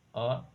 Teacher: अर्धविवृत, मुख आधा खुलना, मुख आधा खुलेगा।